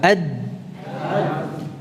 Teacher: Berarti dari mana kita dapat merasakan suara itu terhenti di ujung lidah. Ujung lidah itu makhrajnya dal, ad. Karena ini dapat kita wujudkan, berarti makhrajnya huruf dal ini adalah makhraj muhaqqaq, ya, lidah.